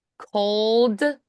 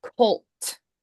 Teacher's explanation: And make sure that you're focusing on the D's and the T's being different. D's vibrating in the throat, T's not vibrating.